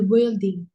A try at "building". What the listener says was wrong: Nah, cara baca building. Building cara bacanya U-nya nggak usah dibaca. Building. Building.